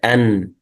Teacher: مخرج النون من طرف اللسان مع لثة الأسنان العليا